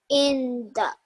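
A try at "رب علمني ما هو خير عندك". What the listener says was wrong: Well done, mashallah.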